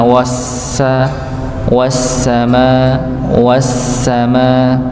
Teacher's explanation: maka wnya langsung masuk pada huruf sininnya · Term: alif lam syamsiyah